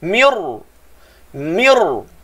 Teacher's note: Masa mula-mula daripada tempoh mi satu harakat, pergi ke makhraj ra, terus sebut tebal.